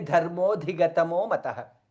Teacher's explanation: both the dha are Mahaprana